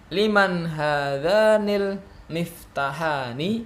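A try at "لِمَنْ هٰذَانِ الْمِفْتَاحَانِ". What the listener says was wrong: Taknya panjang. Liman hadzanil miftahani. Ya, tanya jangan lupa tetap panjang ya.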